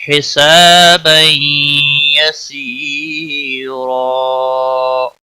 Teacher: تنوین کے بعد حروف یرملون کا یا آیا ہے، ادغام باغنہ ہوگا